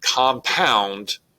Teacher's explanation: To illustrate this in a stronger fashion, the word compound is an iambic word because you've got 2 syllables. The stress is falling on the second syllable.